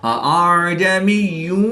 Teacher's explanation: اس حمزہ میں تسہیل یعنی اس حمزہ کو نرمی اور آسانی کے ساتھ پڑھیں گے۔